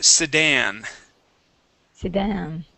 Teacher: Sedan with the stress at the end.